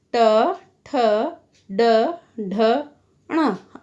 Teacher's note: इन 5 वर्णों का उच्चारण स्थान बच्चों मूर्धा होगा